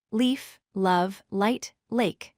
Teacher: Pay attention to how the light L sounds. It's clear and bright.